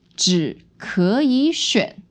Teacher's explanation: So the 只 is still a third tone or half third tone, and then you have second, third.